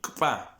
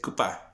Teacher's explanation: como si fuera la K y después viene pa, como si se apagara la vocal entre la K y la P. Así lo escucho yo, así lo he escuchado siempre.